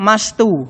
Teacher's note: Huruf S dihilangkan sehingga menjadi mastu. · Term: penghapusan